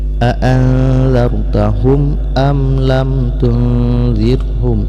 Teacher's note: Saya ulangi, a'anzartahum am lam tunzirhum, nun mati bertemu dengan zal, hukum misalnya ikhfa, yaitu disamarkan bunyi nun ke dalam zal kemudian didengungkan